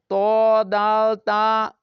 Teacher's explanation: ১১ number মাখরাজ, জিহ্বার আগা সামনের উপরের দুই দাঁতের গোড়ার সঙ্গে লাগিয়ে ত দাল তা উচ্চারিত হয়।